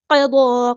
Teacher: قاف ہمارا ہیوی پورا ادا کریں گے، ضاد بھی ہمارا ہیوی پورا ادا کریں گے